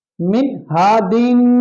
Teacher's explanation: मीम नून जेर मिन, हा अलिफ जबर हा, दाल दो जे दिन, मिन हा दिन, मिन हा दिन पढ़ेंगे हम। ये मिन में नून साकिन है, यहां नून साकिन के बाद हा आया है हुरूफ हल्की में से, तो इसलिए हम यहां गुन्ना नहीं करेंगे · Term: इजहार